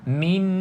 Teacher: tuan-tuan puan-puan akan rasa ada aliran suara dekat hidung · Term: dengung